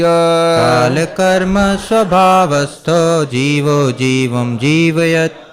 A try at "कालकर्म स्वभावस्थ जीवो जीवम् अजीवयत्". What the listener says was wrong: जीवम अजीवयत। आप माँ जीवम बोल रहे हैं हलंत के साथ, तो उसके बाद अ भी लगाना पड़ेगा, या फिर बोलेंगे जीवो जीवम जीवम जीवयत। तो ध्यान दीजिएगा।